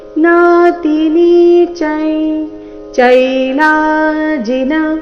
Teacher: ಚ ನಂತರ ಬಂದಿರುವ ಅನುಸ್ವಾರದ ಉಚ್ಚಾರಣೆ ಚ ವರ್ಗದ ಅನುನಾಸಿಕದ ರೀತಿ ಮುಂದಿನ ಶಬ್ದ ಚೈಲಾಜಿನ ಚ ದಿಂದ ಪ್ರಾರಂಭ ಆಗ್ತಾ ಇದೆ ಅದಕ್ಕಾಗಿ ನಾತಿನಿ ಚೈ